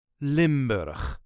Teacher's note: All the letters will be pronounced, and yes, there is that harsh Dutch ch.